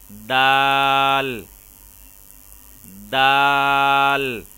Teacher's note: دال کو ادا کرتے ہوئے بھی زبان کی نوک کو اوپر والے دانتوں کی جڑوں میں لگائیں گے تو حرف دال ادا ہوگا